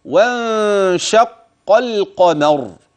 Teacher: احذر ان تاتي بالف في النطق واضحه بين الواو وبين كلمه انشق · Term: الف وصل